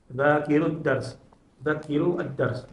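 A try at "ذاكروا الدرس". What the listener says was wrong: Da panjang. Dzakiru ad-dars.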